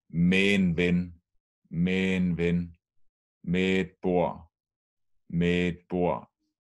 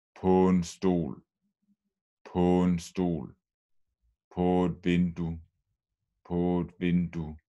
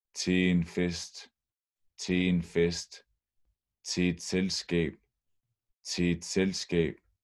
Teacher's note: Fordi når en præposition slutter på lyd på en vokal, altså når man udtaler dem, og det næste ord er for eksempel en artikel, så smelter artiklen sammen med præpositionen og laver en sammentrækning. Så de laver én lyd, typisk én stavelse.